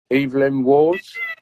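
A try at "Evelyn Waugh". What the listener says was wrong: you you put an S on the end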